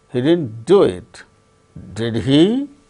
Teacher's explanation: in the case of tag questions, we have to use rising tone.